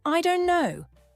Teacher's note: For instance, instead of saying "I don't know" in a slow, clear way, many native speakers say something like, "I don't know." The T sound is dropped, and it's spoken much more casually. You'll also hear this with other phrases like "I want to," which becomes "I wanna," and "should have," which turns into "shoulda." These reductions make the speech sound faster and smoother. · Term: connected speech